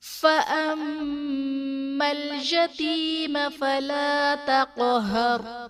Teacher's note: فَأَمَّا الْيَتِيمَ فَلَا تَقْهَرْ، فَأَمَّل میں میم مشدد ہے تو یہاں پر غنہ کریں گے · قاف حرف قلقلہ ساکن ہے، یہاں پر قلقلہ خوب ظاہر ہوگا۔ را ساکن سے پہلے حرف پر زبر ہے تو را کو ہم پر یعنی موٹا پڑھیں گے، اور ساکن حروف وقف کی صورت میں تبدیل نہیں ہوتے۔